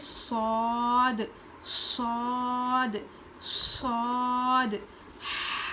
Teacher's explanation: زبان کی نوک کو نیچے کے دانت میں لگا کر پڑھیں گے، تھوڑا زبان ہماری بیچ کا جو حصہ ہوتا ہے وہ اوپر اٹھے گا